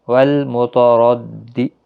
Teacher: را زبر کی وجہ سے پر پڑھا جائے گا